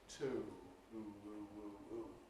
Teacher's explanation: You can hear some diphthongal movement there, particularly when it’s, you know, at the end of a word with stress and so on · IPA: [tʊu]